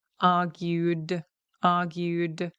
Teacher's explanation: because it ends in a vowel. When we have vowels, we engage our vocal cords, right? So it ends in a hard D.